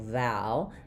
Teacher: our stress is on the first syllable, val, which means we have the clear a vowel, like in cat or valley, for the letter A.